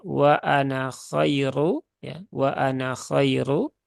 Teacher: kalau di wasal berarti nunnya dibaca pendek